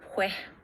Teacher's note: hay elisión y lenición de la S de la sibilante